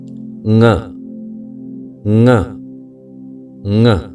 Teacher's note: यह अपने आप में स्वतंत्र वर्ण है, जिसका उच्चारण नासिका से होता है। जी हां, यह कंठव्य वर्ण होने के साथ ही अनुनासिक वर्ण है।